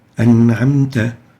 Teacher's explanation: the noon is just a simple noon sakina without qalqala. We say an'amta, not an'amta, just a simple an'amta.